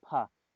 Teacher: दंतोष्ठ से आपका जो वा है और फा, ये आपके दंतोष्ठ से उच्चारित होने वाले व्यंजन हैं